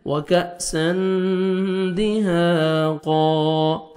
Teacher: تنوین کے بعد حروف اخفاء میں سے دال ہے، یہاں پہ آپ نے نوز میں ساؤنڈ لے کے جانا ہے ، وَكَأْسًا دِهَاقًا، ہا پڑھیں گے، الف مدہ 1 سیکنڈ آپ